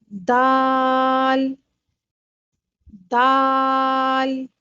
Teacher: دال کو ادا کرتے وقت زبان کا اکثر و بیشتر حصہ تالو کی طرف نہیں اٹھتا بلکہ نیچے رہتا ہے۔ دال کو ادا کرتے وقت زبان کا بیشتر حصہ تالوں سے علیحدہ رہتا ہے۔